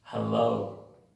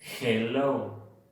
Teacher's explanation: La H de inglés es como si limpiaras unos lentes. Es más débil.